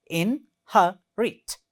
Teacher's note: In this word, there are 3 syllables, and the second one is stressed one.